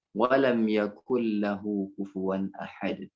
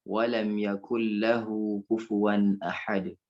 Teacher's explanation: Karena ada nun sukun bertemu dengan lam, maka dimasukkan ke huruf lam.